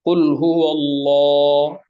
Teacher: এখানে কিন্তু কুলহু আল্লাহ এখানে মোটা হচ্ছে ল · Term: লাম